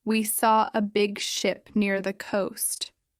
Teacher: In ship, the mouth is more relaxed, short sound. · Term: short I